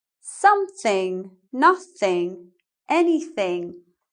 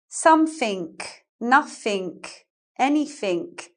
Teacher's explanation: in Cockney English, you change the ing to a K and you change the th to an F